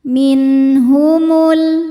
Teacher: Maka nun dibaca n, jelas, tidak perlu ditahan. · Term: izhar halqi